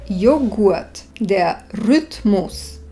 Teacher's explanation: Tu sa spoluhlásky G a R vyslovujú bez prídychu.